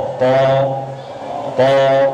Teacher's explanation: Kalau pangkal lidah terangkat, nih, naik ke atas. Ini menunjukkan bunyi to. Otomatis kalau pangkal lidah bagian dalam terangkat akan bunyi to.